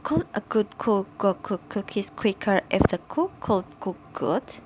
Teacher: helps differentiate C voiceless and G voice which are pronounced at the back of the mouth